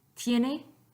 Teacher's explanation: Tiene, with the T, you should not have any vibration. So that is un sonido sordo.